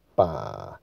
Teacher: 很快的把它往下坠，降到最低点，越快越好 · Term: 第三声